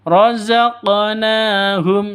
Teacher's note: Terpantul pada huruf Qaf atau huruf Qalqalah. Letaknya di tengah, jadi ini Qalqalah Sugra, dipantulkan.